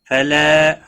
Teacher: فلا الف مدہ ہے، ایک الف کے برابر کھینچ کر پڑھیں گے